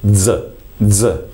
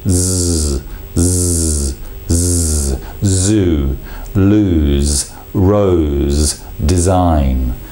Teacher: what we do in Italian is actually almost create a d Zed together